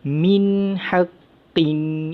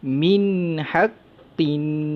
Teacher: nun tersebut dibaca dengan izhar halki, iaitu jelas, nyata dan terang tanpa dengung